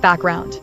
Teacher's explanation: in background noise it is the G that appears to get lost